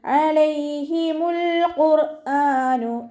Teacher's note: ഖാഫ് ഇസ്തിഅലാൻ്റെ letter ആയതുകൊണ്ട് തഫ്ഹീം ചെയ്തിട്ട് ഉച്ചരിക്കുക.